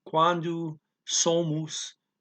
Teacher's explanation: so I'm making a nasal M out of it, not really pronouncing it